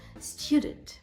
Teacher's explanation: Student у нас іде наголос на перший склад.